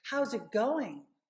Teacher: you get the linking how's it right so you get that connection that flow